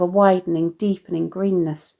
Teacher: Note how Hughes uses internal syllabic rhyme here with widening, deepening, a long I vowel sound in widening and assonant E vowel sounds in deepening greenness